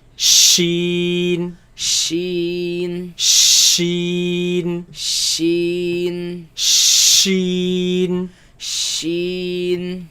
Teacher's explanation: this comes from the middle of the tongue against the middle of the upper palate